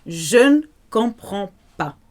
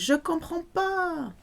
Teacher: French often miss out the ne in spoken French.